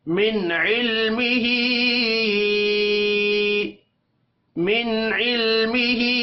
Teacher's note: ही, हा के ऊपर छोटी मद है, 3 सेकंड खींच कर पढ़ेंगे · नून साकिन के बाद आइन आ रहा है, इजहार होगा, गुन्ना नहीं करना। इल्मिही, लाम साकिन को हिलाकर नहीं पढ़ना।